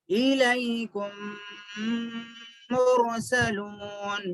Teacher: الیکم مرسلون، یہاں پر دیکھیے میم ساکن کے بعد میم ہے، میم ساکن کے بعد میم ہے، تو کیا کرنا، غنہ کر کے پڑھنا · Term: ادغام شفوی